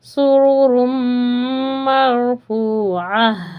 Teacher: را پر ساکن ہے اور اس سے پہلے زبر ہے تو اس را کو پر کر کے یعنی موٹا کر کے پڑھیں گے